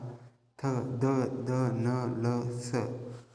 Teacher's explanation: आपली जीभ जर दाताला लागते तर त्यांना दंतवर्ण म्हणायचे